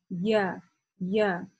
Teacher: края э середины языка да то есть как бы Боковые стороны середины языка они поднимаются выше и касаются э верхних коренных зубов Да я я и здесь нужно именно вот это касание отрегулировать · При этом середина языка, если вы внимательно поразмыслите и ощутите, как вы произносите, иншалла, если вы это делаете правильно, я, при этом середина языка поднимается, и края середины языка, да, то есть как бы боковые стороны середины языка, они поднимаются выше, и касаются верхних коренных зубов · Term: я с фатха